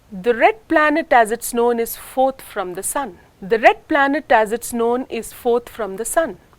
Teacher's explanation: here the subordinate clause as it's known is uttered with the lower pitch and fastness when compared to the main clause